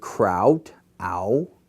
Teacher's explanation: The other, upsilon, if I say the word kraut, ow, same thing. I glide into a more W sound